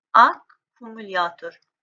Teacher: Qoşa gələn K samitləri var ki, tələffüsdə bütövlükdə bir dənə k səsini ifadə edəcək.